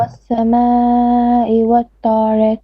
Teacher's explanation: A little bit longer on the sama, four beats minimum.